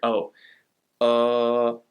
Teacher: You actually have to slide between vowels to say the name of that letter, O. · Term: vowel slide